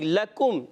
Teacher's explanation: قاف موٹا نہیں، کاف باریک